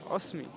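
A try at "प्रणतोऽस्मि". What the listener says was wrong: এই হয়ের মাত্রা না থাকলে অ আর দন্ত স আছে, ওটা কি উচ্চারণ? অস্মি বলছি কেন? ওস বলো ওস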